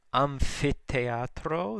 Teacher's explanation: the PH is pronounced like an F, though TH is T sound with the aspiration after it, the breath sound.